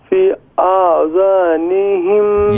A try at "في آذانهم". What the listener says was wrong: یہ فی کے اوپر مد ہے، اس کو لمبا کریں، فی آذانہم.